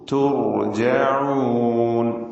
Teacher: തുർജഊൻ, റാഇന് മാത്രമാണ് തഫ്ഖീം നൽകേണ്ടത്.